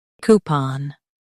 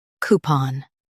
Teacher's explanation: In US, stress coup. In UK, stress pawn.